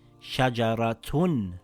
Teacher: We pronounced both words with a ha at the end. But if the word with a tied up ta is linked to another word it will be pronounced as a ta